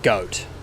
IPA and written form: gɐʊt (goat)